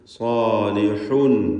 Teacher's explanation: ഹ വ്യക്തമായി അതിൻ്റെ മഖ്റജിൽ നിന്ന് അഥവാ തൊണ്ടയുടെ മധ്യത്തിൽ നിന്ന് ഉച്ചരിക്കുക. തൻവീൻ വന്നിരിക്കുന്നു, അതിനുശേഷം ഹംസയാണ്.